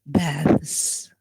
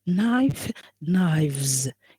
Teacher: You see that the F becomes V, and automatically when it becomes V voiced, we don't pronounce S, we pronounce the end, suffix ending as Z.